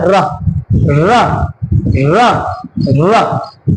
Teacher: जीभ मूर्धा से जाके टकरा रही होगी, र र, तालु के ऊपर टकरा रही है और तालु से ऊपर क्या होता है, मूर्धा।